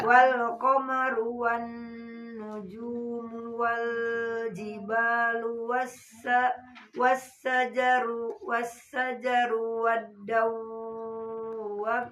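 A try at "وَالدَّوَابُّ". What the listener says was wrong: Ya, wa ana dipanjangin dulu 6 harkat. Waddawabu.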